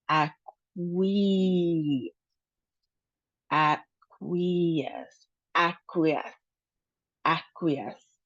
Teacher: We have three syllables. Um so, the emphasis is on the last syllable, -es. And then we have a long e sound in the middle.